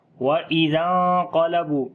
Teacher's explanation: وَإِذَا انقلبوا، زال کو نرم پڑھیں گے، نون ساکن کے بعد قوف آ گیا، اخفا کریں گے، ہیوی اخفا ہوگا، موٹا اخفا کریں گے، کیونکہ نون ساکن کے بعد جو اخفا والا حرف ہے وہ موٹا ہے، قوف حروف استعلاء میں سے، اس وجہ سے اس کو یہاں پر اخفا بھی موٹا ہوگا۔